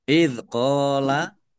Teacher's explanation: dzal sukun bukan qalqalah ya, jangan dipantulkan